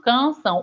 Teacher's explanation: o ar ele vai passar aqui dentro né pelo nariz e vai sair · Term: som nasalizado